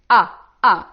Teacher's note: our mouth and we are letting the the letter floating out we are using our vocal chords here to say ah ah without stopping anything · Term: alif